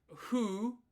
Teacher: the F sound in Japanese is like a strange mix of F and H. It only really You only ever see the F as fu.